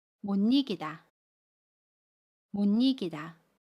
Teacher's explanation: 그러면 못 이기다 라고 발음해요. 받침 시옷은 받침 소리 니은으로 발음해요. 그리고 모음 이는 니로 발음합니다.